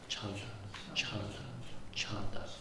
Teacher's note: very J sounding, ja, ja, ja, but it's aspirated, so it becomes chanda, chanda, chanda.